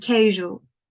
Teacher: It's a voice sound, and it is fricative also. It is platal, similar to sh sound. We make room for the air to flow there to create the zh sound.